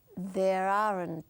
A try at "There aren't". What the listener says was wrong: No alargues, aren't. It's aren't.